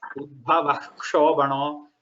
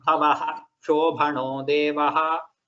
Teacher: There Udbhavaha already has the Visarga and it is followed by Sha. There you have to tell the Visarga completely and then say Ksha. You should not say Udbhava Shobhano.